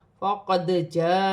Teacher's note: دال ساکن ہے، حرف قلقلہ میں سے ہے، قلقلہ کے ساتھ ادا کیا جائے گا